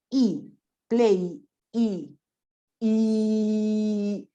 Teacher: is e play e e if you put your finger here you can feel the vibration of vocal chords